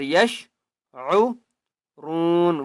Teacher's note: را کو ایک الف کی مقدار کھینچ کر پڑھیں گے اور را کو پر پڑھیں گے